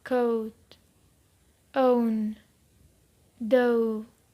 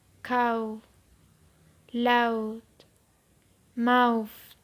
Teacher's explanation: The last 2 diphthongs are also closing diphthongs. They have the back rounded vowel U as the finishing position. · In these diphthongs, the tongue moves to U.